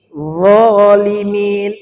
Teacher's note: inu [Musik] anfusahum yadlimun sama-sama wamuna Wakin Kanu anusum un ini huruf d itu hurufnya mengalir suaranya Jangan tertahan dan dia tidak berqalqalah